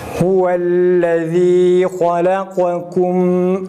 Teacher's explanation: Ötreyi okurken insanlar halakakum dudak önde olduğu halde gunne yapılmaz. Huvellezî halakakum dudak hızlı bir hareketle öne doğru uzatılıp geri gelir.